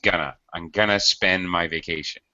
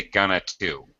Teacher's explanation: tried to reduce the going to and it sounded like gonna if you reduce it then you don't say to just gonna